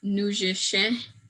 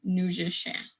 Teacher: Women particularly have a hard time doing these nasalized sounds, but it's kind of like you're trying to say the word out of your nose. You're trying to talk out of your nose and make it a really kind of nasally sound, and nujishe is one of those words.